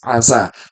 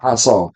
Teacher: Kalau sin itu tipis, tipis asa, tapi kalau short tebal aso.